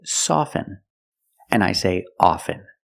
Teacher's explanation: With both words, I don't pronounce the T.